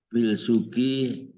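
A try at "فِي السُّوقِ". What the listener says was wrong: Jangan fil. Itu huruf samsiah. Fis. Ini kan asuk. Jadi fis. Iya fis, tidak fil.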